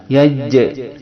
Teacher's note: Yang kedua, selain sifat jahr ini, jim mempunyai sifat syiddah, yaitu ditekan